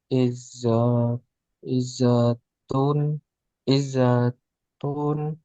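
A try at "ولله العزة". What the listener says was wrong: ada alif lam berarti hilang tanwinnya.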